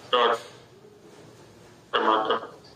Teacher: मूर्धा वह स्थान है जहां से ट का उच्चारण हो रहा है, ट, टमाटर, जीभ एकदम ऊपर खड़ी हो जाती है